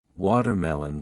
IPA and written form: ˈwɔːtərˌmɛlən (watermelon)